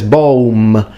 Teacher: it's interesting because he fully pronounces the M